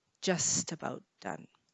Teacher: We're just about. Notice the T links to the A, just about done.